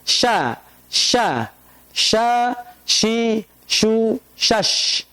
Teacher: tengah lidah dengan langit-langit yang lurus di atasnya. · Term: huruf shin